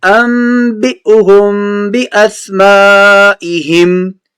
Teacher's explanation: انبئهم کی حمزہ کو جھٹکے سے پڑھنا ہے